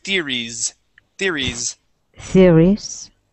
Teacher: now that S at the end of the word is a Z sound, so we need to say theories, theories.